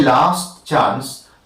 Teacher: When you say last chance, you hear the t, you also hear the ch.